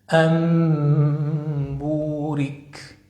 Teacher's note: وذلك عند الباء. أي جعل النون الساكنة أو التنوين ميمًا مخفاةً بغنةٍ مقدارها حركتين إذا جاء بعدها حرف الباء · انظروا، أي وثالث أحكام النون الساكنة والتنوين الإقلاب، ويتحقق الإقلاب أو القلب في النون الساكنة أو التنوين إذا جاء بعدهما حرف الباء، فنقلبها ميما مخفاة بغنة مقدارها حركتين